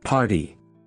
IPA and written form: ˈpɑːrti (party)